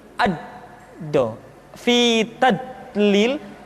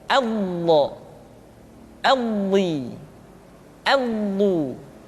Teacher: Di antara sifat yang menonjol pada pengucapan huruf dha adalah sifat al-istitalah, yaitu suara kita memanjang dan terdengar lembut suaranya ketika diucapkan. Tidak diucapkan seperti ini, ad-do, fi tadlil, tapi diucapkan dengan suara yang lembut, memanjang suara kita.